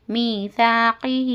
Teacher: میم یا زر می یا مدہ ہے کھینچ کر پڑھنا